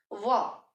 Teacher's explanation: ओष्ठ्य means जब आप बोलते हो तो होठों की शेप, मतलब होठों से हम बोले तो उस चीज को उ ओ व, जबकि व बोलते हैं तो हवा ऐसे बाहर निकलती है, दांत टच करते हैं होठों को, हमारे थोड़ी थोड़ी, व है ना, वो ऐसे हम बोलते हैं। ये दांत जो है नीचे वाले होठों को टच कर रहे हैं